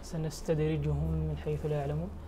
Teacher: الدال هون في قلقلة صغرى · الميم الساكنة قبل الميم حكم الإدغام مع الغنة